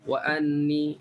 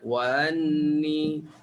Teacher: kita sebut hamzah biasalah, pangkal halkum wa anni, itu tahqiq. Okey. Kalau tashil, sebutan antara hamzah dengan mat, wa anni, tak jelas lah hamzah tu